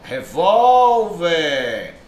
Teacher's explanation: perceba a sílaba tônica não é a última